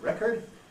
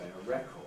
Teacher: Americans sometimes weaken the second vowel and say record, but on the whole in British English we don't.